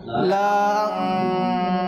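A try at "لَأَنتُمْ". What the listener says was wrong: লা টানবো না, আলিফটা কি করবেন, উভয় অবস্থায় পড়বো না, ঠিক আছে।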